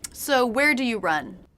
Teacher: did you notice the intonation went down at the end run run that's because it's a question that cannot be answered